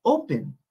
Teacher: el énfasis realmente es en la primera sílaba y no la segunda